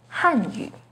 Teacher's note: The pinyin and tone for 汉语 is with a fourth falling tone on 汉